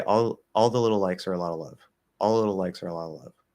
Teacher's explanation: what Americans like to do, particularly whether in the normal range or especially at the fast range, is we'll turn everything into a dark L. Everything, even the light L's.